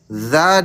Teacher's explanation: Dza ditambah tebal atau lidah belakang yang naik. Lidah belakang PR-nya sebenarnya sih di lidah belakang ya.